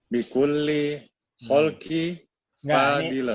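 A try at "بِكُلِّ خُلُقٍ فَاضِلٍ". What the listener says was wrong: Ini bukan khalqin, khuluqin fadilin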